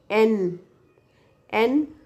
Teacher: that's a tip of the tongue touches to upper teeth